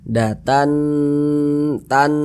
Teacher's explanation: karena dia digunahkan jadi suaranya itu kita tahan kita panjangkan sejenak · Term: ghunah musyaddadah